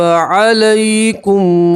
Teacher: یا لین کو جلدی سے اور نرمی سے پڑھتے ہیں. ٹھیک ہے, یا لین کسی کے یا کے اوپر جزم اور اس سے پہلے والے حرف کے اوپر زبر, تو اسے یا لین کہیں گے.